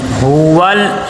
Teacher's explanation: لام کے اوپر جزم ہے اور یہاں پہ کلکلا نہ بنے، ہول آواز رک جائے